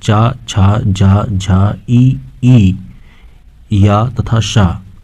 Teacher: चा, छा, जा, झा, ई, या तथा शा का उच्चारण स्थान तालु से है, अतः ये तालव्य ध्वनियाँ हैं